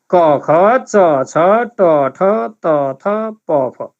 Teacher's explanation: कम आवाज आउने भएको कारणले भनेको आवाजमा बढी जोड दिनु नपर्ने, घाँटीमा बढी फोर्स नपर्ने यी व्यञ्जनहरू हुन्। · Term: अघोष